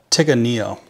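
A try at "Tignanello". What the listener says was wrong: Tiga, but see, there's an extra, there's two N's in there. So it's Tignania, maybe.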